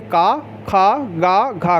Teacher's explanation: काखा गाघा है, इसका उच्चारण होता है कंठ से